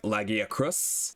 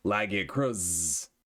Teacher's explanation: Is it an unvoiced S like Lagiacrus? Or is it a voiced S or a Z sounding like Lagiacrus?